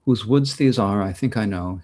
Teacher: very very straight iambic tetrameter so four feet of two syllables or eight syllables per line